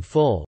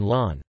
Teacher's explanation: In some accents of English, such as received pronunciation, the phoneme L has dark and light allophones. The dark velarized allophone appears in syllable coda position, e.g., in full, while the light non-velarized allophone appears in syllable onset position, e.g., in lawn.